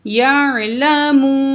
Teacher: واو کو بھی کھینچیں گے، واو کے ساتھ میم کو بھی کھینچیں گے، کیونکہ واو میم سے جڑا ہوا ہے، تو اس لیے کھینچ رہے ہیں کہ واو مد ہے، ٹھیک ہے، تو یہاں ہم 2 پوائنٹ کھینچ کے پڑھیں گے